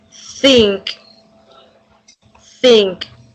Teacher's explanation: It should only produce slightly air flaps between the tongue and the teeth, creating gentle friction. The vocal cords do not vibrate, which is why it is called a voiceless sound.